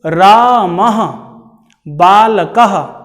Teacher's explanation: विसर्ग प्रायः आप दो बिंदुओं को देखते हैं, इन्हें ही विसर्ग कहा जाता है और इनके उच्चारण करते समय ह की ध्वनि आती है और ह की ध्वनि कंठ से, ह की ध्वनि का उच्चारण स्थान कंठ है।